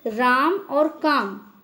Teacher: रा और का के ऊपर बलाघात है, यानी रा और का पर अधिक बल लग रहा है, इस पर जोर देकर बोला जा रहा है।